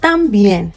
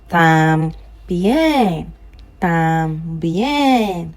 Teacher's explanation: The accent is on the E, so the tam goes down.